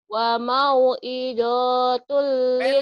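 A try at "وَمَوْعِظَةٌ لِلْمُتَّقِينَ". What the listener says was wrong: Pendek. Wa mau izatul. Hada bayanul linnasi wa hudaw wa mau'izatul lil muttaqin.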